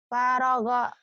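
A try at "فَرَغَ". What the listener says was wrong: Nggak ada yang panjang, fa-nya pendek.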